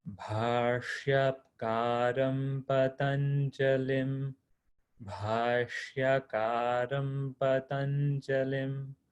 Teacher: So really use your Mahaprana with the bha.